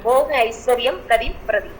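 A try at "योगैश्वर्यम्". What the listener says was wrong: okay தாய்க்கு பார்த்தாச்சு போக ஐஸ்வர்யா ஐஸ்வர்யம் இருக்காது ஐஸ்வர்யா தான் இருக்கும் இங்கிலீஷ்ல தமிழ்லயும் பாருங்க கதிம் பிரதி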